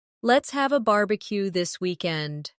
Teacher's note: Stress barbecue and weekend so it sounds lively and friendly.